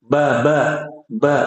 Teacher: ba ni dari kedua bibir